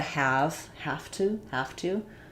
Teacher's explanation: we lose that v and it becomes an f and we lose that z in has and it becomes an s